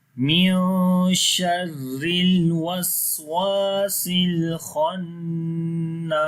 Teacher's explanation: Khannas, kha we read in heavy sound, this is a heavy letter, we make ghunna sound on the noon due to shad sign.